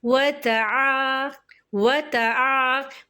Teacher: عین کے اوپر زبر ہے، اس کے ساتھ الف خالی، اس سے پہلے زبر، ایسا الف مدہ کہلاتا ہے. الف مدہ کو 2 حرکات کھینچ کے پڑھتے ہیں.